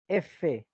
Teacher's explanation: porque tu diente está pegado al labio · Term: labio dental